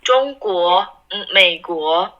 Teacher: second tone so it goes up